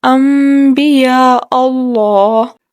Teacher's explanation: جیسے لفظ ہے انبیاء اللہ، انبیاء لفظ تھا لیکن ہم نے انبیاء اللہ پڑھا ہے، نون ساکن کو میم سے بدل دیا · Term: اقلاب